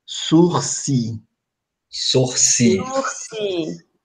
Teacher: Observe que o R aqui não é pronunciado. Ó. Só tem um, dois, três, quatro, cinco sons.